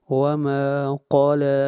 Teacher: قاف کو موٹا پڑھیں گے، قاف حروف مستعلیہ میں سے ہے